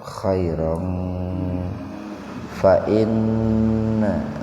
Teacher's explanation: Fathatain ketemu dengan fa, jadi betul-betul dibaca samar itu. Khairong fa inna gunna nawlo takhim.